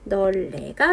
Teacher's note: 그래서 널네가 되는데 앞에 있는 리을의 영향을 받아서 뒤에 있는 니은이 유음화 되어서 최종 발음은 널레가 됩니다. 여기서 여기로 갈 때 자음군 단순화, 즉 탈락이 한 번 일어났고요.